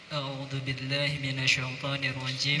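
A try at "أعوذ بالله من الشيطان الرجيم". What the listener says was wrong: Minasyai bukan syai. I bukan e, bukan imalah. Kalau ke e tapi bibirnya kuncup. Coba yang benar a'udzunya. A'udzu billahi minasyaiton. To tidak kuncup bibirnya. Bukan to. Bibir kuncup hanya untuk dhammah. Kalau fathah, to itu dhammah atau fathah? Fathah. Minasyaiton.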